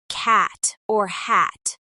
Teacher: The held T happens when the T is at the end of a word but is not fully released